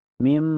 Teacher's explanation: Ini hukumnya idgham digunnah. Cara bacanya nun sukunnya dimasukkan ke mim dan ditahan sampai terasa ke hidung ya.